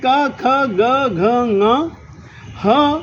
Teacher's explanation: ये कंठ्य कहलाते हैं कि कंठ के साथ श्वास के स्पर्श के बिना इतने वर्णों का उच्चारण अशक्य है